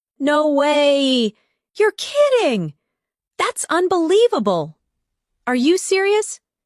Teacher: Try saying them with emotion. Feel the rise in your voice when you express surprise.